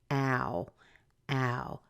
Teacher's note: be really careful that you're saying ah a like cat plus ooh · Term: the arrow sound, ow sound